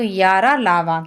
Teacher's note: और अंतस्थ व्यंजन, जिन व्यंजनों के उच्चारण में जिह्वा मुख से किसी भाग को स्पर्श नहीं करती है, कि जिह्वा क्या होती है, मुंह के किसी भी भाग को स्पर्श नहीं करेगी, और हवा बिना रगड़ खाए मुंह से बाहर निकल जाती है